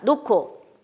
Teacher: 기역, 디귿, 지읒이 따라 나올 때는 유기음화 현상이 일어나서 노코라고 발음하면 됩니다. 히읗이 기역에 합쳐진다고 생각해서 새로운 하나의 또 다른 음운, 자음이 소리로 나게 되죠.